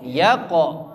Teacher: Yaqo qafnya mantul. Yaqo mantul tebal.